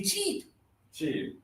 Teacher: cheap, your tongue is high in your mouth